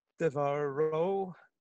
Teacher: So the accent's on the ro.